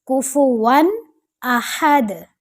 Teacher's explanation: ون نہیں کرنا، اظہار کا رول ہے، یہاں آپ نے ظاہر کر کے کلیئر کر کے پڑھنا ہے